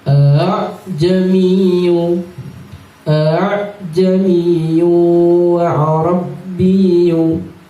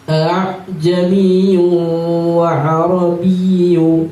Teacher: Jadi huruf hamzah yang 2 itu digabung menjadi 1. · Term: Tashhil